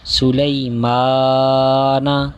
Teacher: حرف لین کو بغیر کھینچے بغیر جھٹکا دیے نرمی سے معروف پڑھیں گے